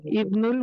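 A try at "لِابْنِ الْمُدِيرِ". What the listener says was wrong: ले इब्ने नहीं कहेंगे, लेबने, है ना, लेबने।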